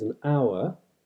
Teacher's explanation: just like in modern English the H isn't pronounced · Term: H dropping